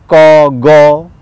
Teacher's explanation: আরও পিছনে গেলে আছে কণ্ঠমূল, সেখানে ক, গ এইসব ধ্বনি